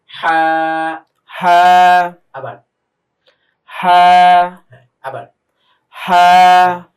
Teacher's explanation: গলা থেকে একটা চাপ দিয়ে হালকা একটা বাতাস বের হচ্ছে।